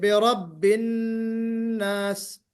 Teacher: نون پر غنہ ہوگا، نون مشدد کا غنہ. قل اعوذ برب الناس، جب ناس کہیں گے تو آپ کی ایک سیٹی بجنی چاہیے.